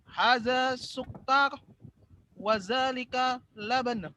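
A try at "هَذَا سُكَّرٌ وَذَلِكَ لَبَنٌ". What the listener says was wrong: Dibaca harokat akhirnya. Coba ulang. Dibaca harokat akhirnya.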